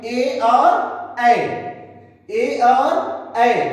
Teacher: इन वर्णों का उच्चारण कंठ और तालु दोनों से सम्मिलित रूप में होता है। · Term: कंठ तालव्य